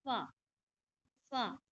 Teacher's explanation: फा नहीं बोलना आपको, दोनों होठ मिला के नहीं बोलना, बल्कि आपको बोलना है दो ऊपर के दांतों को नीचे के होठ से मिलाए। फा, फा।